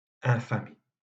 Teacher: Dans infamie, c'est I qui est la voyelle tonique. Et donc, ce n'est pas nécessaire de marquer la longueur de la voyelle avec l'accent circonflexe.